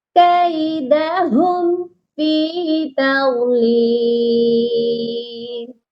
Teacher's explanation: یجعل کیدہم، اس ہم پر بھی اظہار شفوی ہوگا۔ اکثر لوگ اس ہم ادھر غنہ کرتے ہیں، یہاں پر غنہ نہیں کرنا، یہاں پر بھی اظہار ہی کرنا ہے، میم کو پڑھنا ہے، بس یہ ظاہر کرنا ہے۔